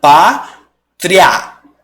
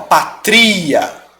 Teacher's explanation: O som está crescendo, porque você tem uma semivogal e vai para uma vogal. Ou seja, um som fraco que vai para um som forte. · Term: ditongo